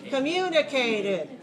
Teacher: first syllable very weak second syllable strong clear long high